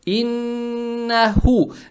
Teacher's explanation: Далее стоит буква ха, она мягкая, на выдох произносится. Иннаху.